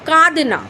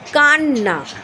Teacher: কাঁদনা দটা উঠে গিয়ে হয়ে যাচ্ছে কান্না, দুটো সমবর্ণ চলে এলো, তাই তো। তাহলে প্রথমটা ছিল দ আর দ্বিতীয়টা ছিল দন্তের ন, কাঁদনা থেকে হয়ে গেল কান্না, তাই দন্তের নয় আঁকা। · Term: পরাগত সমীভবন